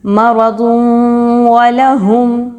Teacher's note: تنوین کے بعد واو آ رہی ہے وَلَهُمْ میں، تو ہم یہاں پر ادغام ود غنہ کریں گے۔ مرض وَلَهُمْ، واو زبر وا، لام زبر لا، والا، ایک حرکت کے برابر اس کو رکھیں گے۔